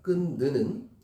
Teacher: 끈느는 히읗만 탈락되는 거예요. 연음이 안 되는 거죠. 뒤에가 자음일 때는.